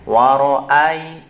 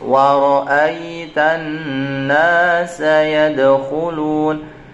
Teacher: ketika kalian mengucapkan fathah kemudian ada ya yang berharokat sukun ini, jangan sampai bunyi ai. Wa ra'ai tidak boleh.